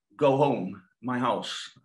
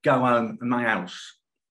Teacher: even though Cockney, London's dialect, is H-dropping, MLE is not. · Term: H reinstatement